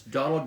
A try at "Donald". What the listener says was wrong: So for this one, I would say that just to pronounce Donald. So it pretty much you just stop in the D, so like t, Donald, Donald, right? See, Donald, and then duck, duck.